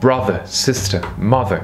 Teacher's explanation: Encore et toujours la première syllabe, la NSR, Normal Stress Rule.